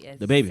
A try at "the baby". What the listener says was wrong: It's not It's the baby. You're not saying duh. the baby. It's the baby. The baby. No, you're saying the baby. You're like it's. It's the baby.